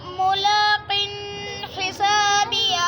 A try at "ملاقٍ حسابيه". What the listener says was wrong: ملاقن پہ غنہ ہے بیٹا؟ ملاقن آیا ہوا ہے یہاں ملاقن پہ غنہ ہے یا نہیں ہے؟